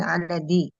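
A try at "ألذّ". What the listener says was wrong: Ah, zalnya tasydid, dia isim tafdil min alaz aladzi.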